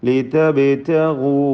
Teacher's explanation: ബാഇന് ഖൽഖല സൂറ കൊടുത്ത് ശബ്ദം ഹറക്കത്ത് പോലെ ചലിപ്പിക്കുക